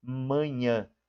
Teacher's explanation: o M e o N, eles dão uma nasalizada quando a gente fala